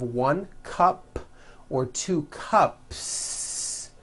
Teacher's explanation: unvoiced so for example you have one cup or two cups there's no voicing at the end of that word the S remains unvoiced